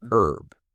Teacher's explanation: But in British English, the H is pronounced